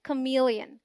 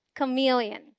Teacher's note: The first syllable, जो कि unstressed है, sounds like k, as in come. MEL is the stressed syllable and it sounds exactly like meal.